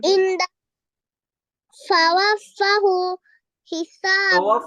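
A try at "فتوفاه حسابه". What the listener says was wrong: Tawafahu, stretch it. There is standing fatha.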